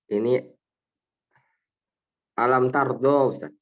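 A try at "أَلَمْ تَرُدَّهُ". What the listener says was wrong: Jangan panjang. Ya, alam tarodohu. Jadi pendeknya. Tarodohu, ya. Hu-nya man tetap lanjut.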